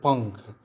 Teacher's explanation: इसकी ध्वनि नाक से निकलते है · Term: अनुस्वार